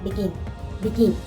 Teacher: the stress will be on GIN, begin, begin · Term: accented